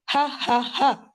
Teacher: जैसे ह को ह से डिफरशिएट करने की एक और टिप ये हो सकती है कि ह इज लाइक द हैप्पी ह जो चेस्ट के करीब से पैदा होता है।